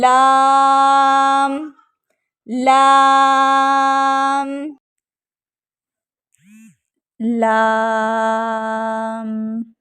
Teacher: जुबान के पिछले हिस्से से लेकर जुबान की नोक तक सारी जुबान लगेगी मसूड़ों को ठीक अगले चार दांतों के मसूड़ों को लगेगी